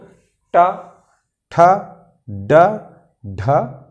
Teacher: मूर्धा यानी मसूड़ा। जब जीभ मसूड़े को टच करता है, मसूड़े को टच करके हवा को रोकता है, तब इस जो वर्ग के वर्ण है इसका उच्चारण होता है। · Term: मूर्धन्य